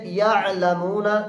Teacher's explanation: عین کی آواز قدر نرم اور بغیر جھٹکے کے